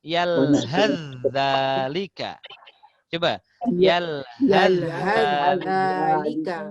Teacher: cara bacanya adalah langsung masuk ke zal. Sa macam tak ada.